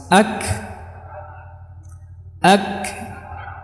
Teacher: keluarnya huruf tanpa disertai dengan bergetarnya dua pita suara ya jadi P suara tidak bergetar kemudian disertai dengan banyaknya udara yang yang keluar ketika pengucapan huruf-huruf HAM ini itu definisi dari dari Hamam ini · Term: hams